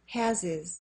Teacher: We keep the H in has because has is the main verb and it's stressed. But the H in his is silent.